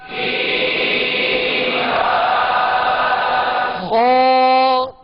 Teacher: کو کھا نہیں پڑھیں گے، خا کو کھا نہیں پڑھیں گے، کیونکہ اس کا مخرج جو ہے حلق کے اوپر والے حصے سے یہ ادا ہوتا ہے